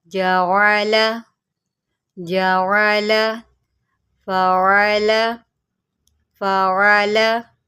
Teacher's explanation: عین کو جو ہے ہم نے اس کے مخرج سے نکالنا ہے، حلق کے درمیان سے نکالنا ہے